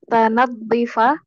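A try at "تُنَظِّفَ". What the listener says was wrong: Bukan ta, rubai dia Nadzafa. Tunadhifa. Bukan. Tunaz, dengan ta.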